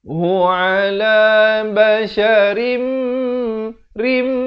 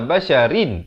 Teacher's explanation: Asalnya basharin, ra tanwin di bawah, baris 2 bunyi rin. Tapi bila datang mim, masuk beserta dengung. Jadi rim 2 harakat, kemudian mi ikhfa hakiki. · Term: idgham bi gunnah